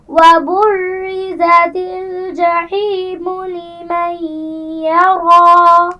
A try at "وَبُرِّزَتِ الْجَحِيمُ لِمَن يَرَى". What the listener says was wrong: شاباش، عمر آپ پڑھیے۔